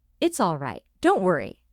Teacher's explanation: Your pitch maintains a low and even level. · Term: seriousness/calm